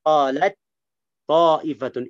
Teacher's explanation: enggak ada hams sudah idgham idgham bersih atau idgham kamil sempurna